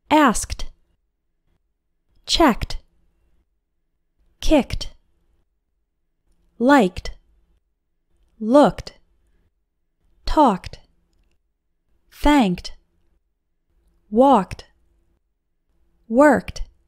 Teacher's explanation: Pronounce ed like t after verbs ending with a k sound.